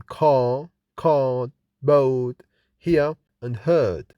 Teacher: The R is not pronounced in British English. Accent is called non-rhotic because the R is not pronounced after a vowel, like in car, card, boat, hear, and heard.